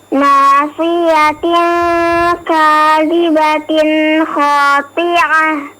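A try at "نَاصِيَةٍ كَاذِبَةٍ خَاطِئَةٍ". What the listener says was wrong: La, hamzah khati'a ya.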